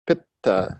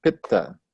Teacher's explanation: And that has a double consonant, pitta. So you emphasize the first syllable, and the second syllable is light. First syllable guru or heavy, second syllable lagu or light, pitta.